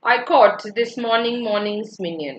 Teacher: Now only I is stressed here. And then it is followed by various unstressed syllables. So if that is the case, then that is called as sprung rhythm by G.M.